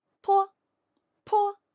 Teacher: 读的时候也是要把坡这个读音读得又轻又短